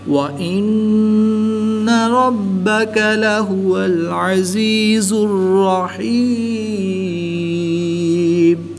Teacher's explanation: نون مشدد میں ہمیشہ غنہ ہوتا ہے، تو یہاں پر ہم غنہ آنی کر کے پڑھیں گے۔ را پر زبر ہے تو را کو پر پڑھیں گے۔ با حروف کلکلہ میں سے ہے، اور جب حروف کلکلہ مشدد ہوں تو ان میں کلکلہ خوب جماؤں کے ساتھ کریں گے، اس کو کلکلہ کبریٰ بھی کہتے ہیں۔